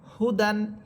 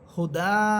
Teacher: যখন আপনি থেমে যাবেন তখন দুই সবরকে এক সবর বানিয়ে একালিফ টেনে পড়বেন